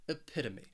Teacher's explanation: This word has four syllables and the stress is on that second syllable, that pit, epitome.